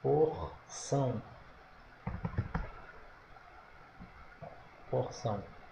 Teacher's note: sílaba tônica é a última também